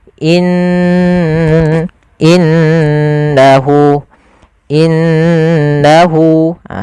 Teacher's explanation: dengan warna hijau cara membacanya Jangan langsung innahu tapi ditahan dulu gunahnya dimasukkan ke rongga hidung kita